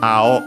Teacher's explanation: Ao on its own accent on the first syllable.